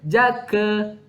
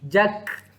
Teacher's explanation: Sahabat Quran, hati-hati, kaf mati tidak ada lantunan.